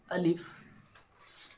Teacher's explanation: ये मुंह के खाली हिस्से से अदा होता है। उसे बिल्कुल सादा पढ़े। · یہ منہ کے خالی حصے سے ادا ہوتا ہے، اسے بالکل سادہ پڑھیں، الف۔